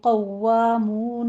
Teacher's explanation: قوامون میں قوف پر پڑھا جائے گا، آگے واؤ کی تشدید ادا کرتے ہوئے